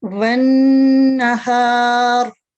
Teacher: इसमें वन नहार, ठीक है, क्योंकि नून मुशद्दद है तो आपने इस पे 2 सेकंड गुन्ना करना है